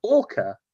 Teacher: There's a little schwa at the end. It would be different in the phonetic alphabet if you have a rhotic R in your accent.